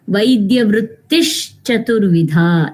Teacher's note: So this Visarga transforms to Shakara